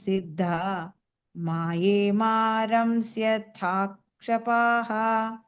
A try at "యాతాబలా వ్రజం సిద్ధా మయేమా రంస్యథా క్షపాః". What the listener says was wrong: మ కి దీర్ఘం లేదు మయేమ